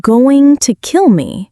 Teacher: Going to becomes gonna. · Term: connected speech